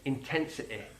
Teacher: Here we hear Marcus Rashford using one of the most He's easy to understand. Mancunian sounds, and that's the I sound on words ending in Y